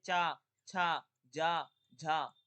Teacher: जिन व्यंजनों के उच्चारण में स्पर्श और संघर्ष दोनों होता है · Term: स्पर्शी संघर्षी व्यंजन